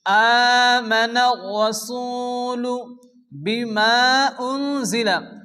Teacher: মাদের পরে দ্বিতীয় শব্দের শুরুতে হামজা মাদ্দা মুনফাসিল 4 আলিফ টেনে পড়তে হবে। নুন সেকিনের পরে ইকফা হরফ জাশ এক আলিফ গুণ হবে।